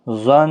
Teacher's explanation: نون مشدد پر گنہ کے ساتھ وقف بھی ہوگا. ظن، اس طرح سے آپ نے وقف کرنا ہے.